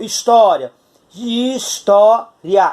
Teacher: Esse izinho é mais fraco, a gente chama de semivogal, e o A é a vogal. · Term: ditongo